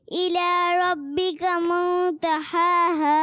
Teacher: دونوں ہاں کلیئر کرنا ہے اور غنہ بھی کرنا ہے